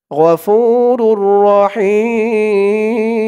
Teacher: হিম হি বলে তিন আলিফ টান দিয়ে এই মিমকে ধরতে হবে মিমের উপরে দুই পেশ তানবিন সাকিন হয়ে যাবে মধ্যে আরজি তিন আলিফ টান